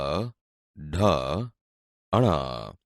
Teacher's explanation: બોલતી વખતે જીભ ઉપર દાંતના મૂળ ભાગને અડે છે, એટલે તે મૂર્ધન્ય વ્યંજન છે